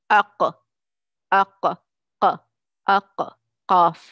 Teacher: this is called the articulation point, when your tongue, posterior tongue rises or is risen and touches the soft palate